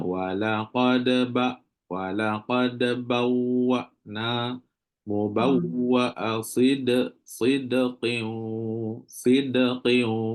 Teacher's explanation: Antara sebelum nak masuk qalqalah tu memang ada sekat, iaitu dia panggil syiddah, betul. Syiddah berlaku sebelum nak masuk qalqalah. · Bila dah lepas qalqalah, antara lepas qalqalah dengan ba tu kena terus masuk tanpa ada berhenti, tanpa ada pause. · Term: qalqalah surah